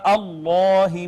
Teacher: پھر ما قبل اس میں جلالت کا مفتوح ہے لہٰذا اس کو مفخم پڑھا